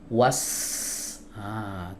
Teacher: Yang dikuatkan anginnya. Was dorong kuat ya, menyembur kuat ya. Ini yang disebut dengan hams ya. Jadi kalau kita letakkan telapak tangan kita di depan mulut was ah terdengar ya.